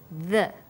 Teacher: when you say the, your tongue is between your top and bottom teeth, like this, the.